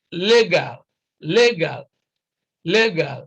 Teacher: so stress is on the first syllable here